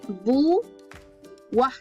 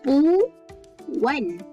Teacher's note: cara sebutan vokal berganding ni mesti kita sebut dalam dua suku kata. Bermaksud kita sebut dalam suku kata yang berbeza.